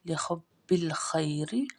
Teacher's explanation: ہا حلقہ درمیان سے ادا ہوگی، اس الف کو ہم نے نہیں پڑھنا، خی میں یا لین ہے، خا موٹا پڑ جائے گا، را باریک پڑ جائے گا کیونکہ را کے نیچے زیر ہے۔